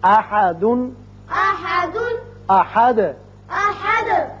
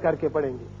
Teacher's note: احد ہے لیکن یہاں آیت ختم ہوتی ہے لہذا دال ساکن ہو جائے گا اور اس کی صفت قلقلہ ادا کریں گے. احد کر کے پڑھیں گے.